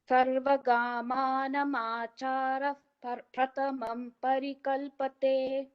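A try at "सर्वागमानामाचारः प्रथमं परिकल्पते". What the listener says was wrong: Sarva is a dirgham. Sarvagamana macharah pradhamam parikalpate.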